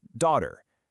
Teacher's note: And then you have the UK version, where the R is softer, more like daughter.